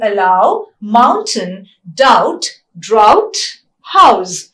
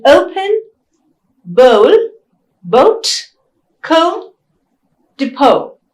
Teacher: So these are the two diphthongs, ow and o. Both are retracting diphthongs as well as closing diphthongs.